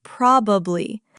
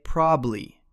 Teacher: It has three syllables written out, but Americans rarely say probably. We swallow the middle part.